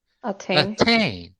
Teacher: naglasak je ovde na drugom slogu